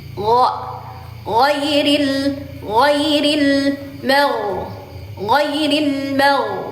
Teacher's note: Jadi giririlin ghairil atau ghairil. Pangkal lidahnya diangkat tebal. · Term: gin